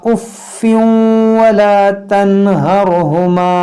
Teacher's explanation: तनवीन के बाद वाव यहाँ पर इदगाम करेंगे